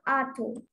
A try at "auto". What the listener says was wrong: No, it's not A, it's O. O. Like in law, how do we say law? Law. So it's O, auto. it's not auto, it's auto. It's automobile or it's automatic. It's not automatic or it's not automobile. There is no O, it is O. Are you able to understand the difference between O and O? For O, you're using the back of your mouth.